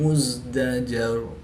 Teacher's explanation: دال ساکن ہے، یہاں پر قلقلہ کو خوب ظاہر کر کے پڑھیں گے۔